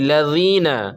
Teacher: نوک زبان اوپر والے دانت سے مل کر ذال، ثا اور ظا، ذال باریک ہوتا ہے اور ظا جو ہے ظا وہ موٹا ہوتا ہے